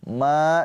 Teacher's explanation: ma dibaca panjang ma dua harakat karena ada pemanjangnya yaitu alif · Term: mad thobi'i